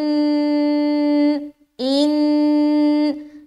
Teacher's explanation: جب ہم غنہ کرتے ہیں تو زبان ٹچ ہو رہی ہے، ٹھیک ہے، اوپر تالو میں